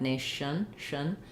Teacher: my schwa might be a little higher because the sh and the n are forward and the n is lifted in the mouth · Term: reduced vowel